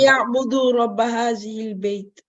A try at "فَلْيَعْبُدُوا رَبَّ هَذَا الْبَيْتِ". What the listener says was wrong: هذا البيت. You keep saying هذه. هذا البيت. هذا البيت. فَلْيَعْبُدُوا رَبَّ هذا البيت.